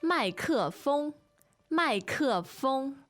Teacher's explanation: two fourth tones and a first